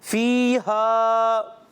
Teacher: یا مدہ اور الف مدہ ایک ایک الف ان کو کھینچ کر ادا کریں گے